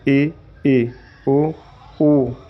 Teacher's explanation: संवृत का अर्थ है बंद। जिन स्वरों के उच्चारण में मुख द्वार सबसे कम खुलता है। लगभग बंद सा रहता है उन्हें संवृत स्वर कहते हैं।